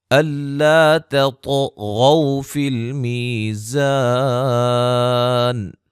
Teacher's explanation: الا تطغوا فی المیزان، الف مدہ، طا کو موٹا اور قلقلہ، غین کو موٹا